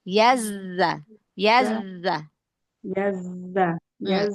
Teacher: kalau sukun kan berarti zainya ada dua ya zai sukun yang pertama nah itu yang sofirnya lebih jelas ee dibandingkan ketika zainya sudah berharakat